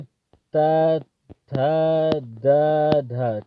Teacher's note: त वर्ग का उच्चारण स्थान क्या है। दंत होता है